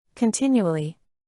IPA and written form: kənˈtɪn.ju.ə.li (continually)